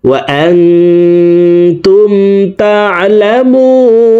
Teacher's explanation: ওয়া আনতুম তা'লামুন, তা আইন জবর তা, আইন হরফকে হলকের মধ্যখান থেকে উচ্চারণ করব, কারণ আইনের মাখরাজ হলকের মধ্যখান থেকে হবে। তা'লামুন, মু এখানে 3 আলিফ টেনে নুনকে সাকিন করতে হবে, কারণ পেশের বাম পাশে জজমওয়ালা ওয়াও মদের হরফ। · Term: মদ্দা আরজি